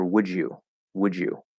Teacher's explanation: the d and the y blend into a j and the d and y disappear